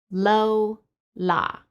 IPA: l